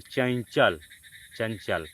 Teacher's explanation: जो चंचल है उच्चारण में च वर्ग का पांचवा अक्षर ञ छिपा हुआ है। तो चंचल, चंचल, अनुस्वार लगा देते हैं।